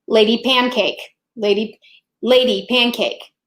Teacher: the stress naturally falls on the first syllable of the word lady